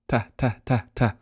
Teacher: I've said the a. The tip of my tongue goes on the upper palate.